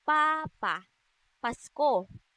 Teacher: Ang letrang P ay walang tunog na isinasaad sa paraan ng pasara at sa punto ng panlabi.